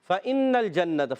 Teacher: نون کو لام سے ملانا ہے، لام کو ہلانا نہیں ہے